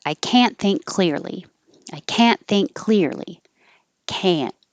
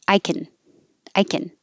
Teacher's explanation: if you hear the vowel ah it's negative